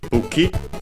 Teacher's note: its accent is on the first syllable